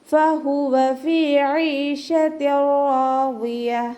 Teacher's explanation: ഫഹുവ ഫ ഉച്ചരിക്കുമ്പോൾ കുറച്ച് ലൈറ്റ് ആക്കിയിട്ട് ഉച്ചരിച്ച് കൊടുക്കുക കേട്ടോ. ഫ നമ്മുടെ മേലെ മുൻപല്ല് താഴെ ചുണ്ടിൻ്റെ ഉൾവശത്ത് വെച്ചിട്ടാണ് ഉച്ചരിക്കേണ്ടത്